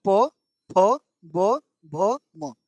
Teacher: जो भी बोलिए होठ में होठ सटेगा बोलिए तो प फ ब भ मने जो भी शब्द बोला सब में होठ मेरा सटा है। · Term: ओष्ठ